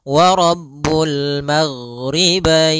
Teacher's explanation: ghain adalah sifatnya rokhawah. Rokhawah itu mengalirnya suara